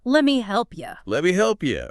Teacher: The vowel in me weakens. Let me And notice you often reduces to yah at the end of sentences too